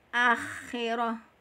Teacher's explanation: huruf kha makhrajnya di tenggorokan bagian atas. Tenggorokan bagian atas dan sifatnya dia satu adalah hamas, mengalir nafas.